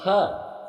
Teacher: थ दंत्य महाप्राण अघोष व्यंजन वर्ण के अंतर्गत आता है